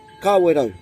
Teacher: the last part saying the rau and rolling your R